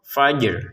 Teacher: Jadi jangan sekedar fajr, ro-nya kan nggak ada. Jadi harus ada ya unsur ro-nya, unsur bergetarnya ro.